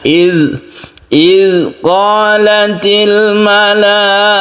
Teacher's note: ada zal yang ada titiknya, dan ini tidak qalqalah, artinya tidak boleh dipantulkan